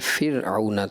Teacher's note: را ساکن ما قبل کسرہ ہو تو را باریک پڑھیں گے